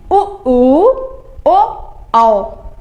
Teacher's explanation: बोलते समय जब हमारे होठों की आकृत गोल-गोल हो जाती है तो उसको वृत्त मुखी कहते हैं